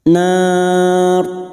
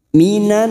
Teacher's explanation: tafkim karena sebelumnya ada harakat fathah Nar ciri-ciri ro tafkim atau ro yang dibaca tebal dengan posisi bibir kita yang seperti cemberut bukan tersenyum